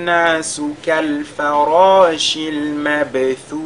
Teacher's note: Le mabthuth, la dernière lettre qui est le tha, également, comme c'est une lettre de al-hams, n'est-ce pas, on doit la ressortir légèrement.